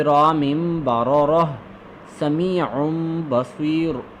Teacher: यहाँ पे गलती हो गई थी, ये तनवीन के बाद भी आएगा, यानी नून साकिन तो होगा लेकिन ये तनवीन जब दो ज़बर दो ज़ेर दो पेश के बाद भी अगर बा आ जाए तो उसको हम मीम के साथ बदल देंगे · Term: इक़लाब